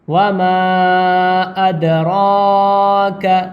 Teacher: وما، میم میں الف ملا ہوا ہے اور الف مدہ ہے، الف کے اوپر مد بھی بنا ہوا ہے، اس لیے اس کو تھوڑا کھینچ کر پڑھیں گے. وما ادراک، را کو تھوڑا پر کر کے پڑھیں گے اور ایک الف کے برابر کھینچ کر پڑھیں گے